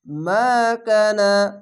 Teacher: জাবারের পাশা খালি আলিফ এখানে এক আলিফ টেনে পড়বেন